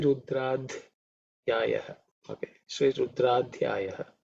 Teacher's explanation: See, this is the fourth, this id is the fourth letter in the ta varga, so it's aspirated.